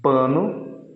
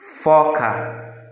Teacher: então aqui logo primeiro exemplo dos sons surdos a sanções que não apresentam vibração das cordas vocais no momento da produção do som